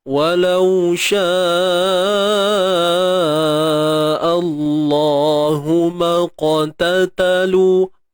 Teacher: Maqtat maqa. Ni huruf qaf. Tebalkan dia qalqalah sughra.